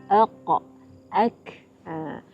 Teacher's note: Dinamakan sebagai al-huruful lahwiyah, huruf anak tekak, kerana kedua-duanya keluar dekat dengan anak tekak, iaitu daging yang tergantung di hujung lelangit kerongkong. Huruf qaf dan huruf kaf diberi gelaran sebagai al-huruful lahwiyah kerana kedua-dua huruf ini keluar dekat dengan anak tekak.